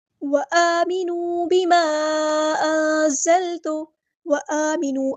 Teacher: الف پہ کھڑا زبر ہے، مد اصلی ہوگی، الف کے برابر لمبا کریں گے۔ واو مد آ گئی ہے تو مد اصلی کریں گے وآمنوا، وآمنوا نہیں پڑھنا، ٹھیک ہے۔